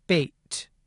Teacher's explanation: the [eɪ] sound is represented as a diphthong, because English speakers almost always produce this vowel with a slight movement toward the [ɪ] vowel at the end.